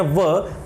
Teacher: व का उच्चारण करते समय दांत और ओठ या ओष्ठ्य दोनों का प्रयोग किया जा रहा है। इसलिए ये दंत और ओष्ठ्य यानी दोनों को मिलाकर के दंतोष्ठ्य ध्वनि हो जाती है।